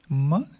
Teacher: م جب ہم دونوں لیپس ایک دوسرے کے قریب لے کے آتے ہیں تو م ساؤنڈ پروڈیوس ہوتا ہے. م ساؤنڈ پروڈیوس ہو کے یعنی ہماری جو اورل کیوٹی ہے وہ بند ہوتا ہے. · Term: نیزل ساؤنڈ